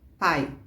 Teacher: Porque a sílaba, ela tem que ter uma vogal. Então, como o I não é vogal, ele é uma semivogal, então ele fica junto do A